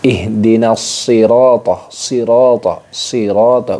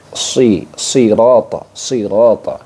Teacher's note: shad itu memiliki desis mirip dengan desis angsa, ya. Shad itu dengan desis angsa. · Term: shofir